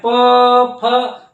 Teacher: देखिए दोनों ओठ टकरा रहे हैं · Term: ओष्ठ